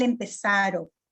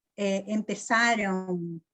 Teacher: Empezaro nuevamente, en el lugar es como una desnasalización, una reducción y una desnasalización, porque en el portugués diríamos empezaron.